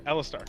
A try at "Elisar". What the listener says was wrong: Elisar. No T.